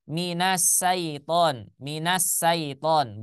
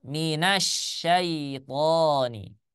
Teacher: ketika mengucapkan huruf yang ada titik tiganya maka nafasnya itu akan melebar ya dia tidak hanya satu arah tapi dia melebar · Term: huruf syin